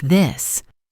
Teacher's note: For a word like this, it's a voice sound, meaning you should feel a little vibration in your throat.